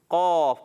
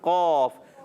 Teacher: اچھا، اس کے ساتھ ہوتا ہے قاف، موٹا قرآن والا قاف، اس کو ہونٹ گول کر کے قوف نہیں پڑھیں گے، قاف، بغیر ہونٹ گول کے قاف